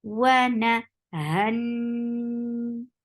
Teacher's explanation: Attached with noon. Noon will get sifa of akmal gunna. So keep the sound in your nose for a longer time. Wana, han. This is gunna.